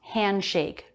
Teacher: the d after an n before a consonant that d will usually be dropped handshake no d sound